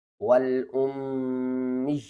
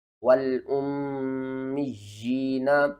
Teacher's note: یا کو آپ نے نیچے کی طرف کھینچنا ہے ایک الف کے برابر